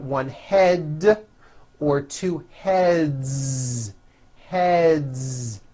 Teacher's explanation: another word head ends with a voiced D so we've got one head or two heads heads its voiced · the word head ends with a voiced D, d, d.